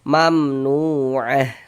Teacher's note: Maka dibaca jelas, tidak berdengung, baca pendek saja. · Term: izhar syafawi